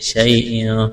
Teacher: یا ساکن سے پہلے زبر ہے، یا لین ہے، کھینچنا نہیں ہے۔